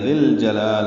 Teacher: جلال میں لا کھڑا زبر قائم مقام مد اصلی 2 حرکات لمبا کریں گے · ذی اور الجلال ملا دیا، ذل جلال. اب یا الف نہیں پڑھیں گے، لام ساکن پہ اظہار قمری ہے جیم کی وجہ سے، جیم حروف قمری میں سے.